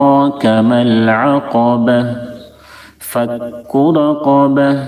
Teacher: را کو پر پڑھیں گے کیونکہ را کے اوپر زبر ہے، قاف کو بھی پر پڑھیں گے کیونکہ قاف حروف مستعلیہ میں سے.